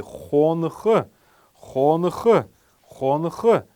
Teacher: Первый неясный гласный будет стоять после буквы Н. Мы должны его произносить как фоновый звук, такой фоновый шум. И после буквы Х тоже обязательно, так как это глагол.